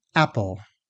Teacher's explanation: The stressed first syllable is said fully, meaning louder, longer, and with a pitch glide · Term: stressed syllable